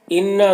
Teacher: انا نون مشدد ہے، غنہ ہوگا